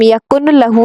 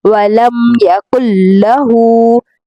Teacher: کاف کو ڈائریکٹ لام کے ساتھ ملائیں گے